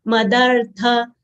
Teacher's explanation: tha full letter, mahapran letter, we should exhale while saying tha